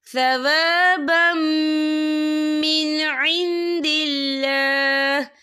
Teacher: من تحتها الانہار ثوابا من عند اللہ، یہ دیکھیے ثوابم، با کے پر تنوین ہے، تنوین کے بعد جو ہے میم آ رہا ہے، اور میم جو ہے حروف یرملون میں سے ہے تو یہاں پر ادغام ہوگا، تو ہم اسے غنّے کے ساتھ پڑھیں گے